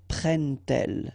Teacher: you won't pronounce it like d to make the liaison, but you will pronounce it like t